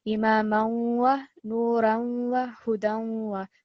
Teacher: So in all of those, you are producing that nasal sound and putting extra emphasis because of the shadda. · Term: partial assimilation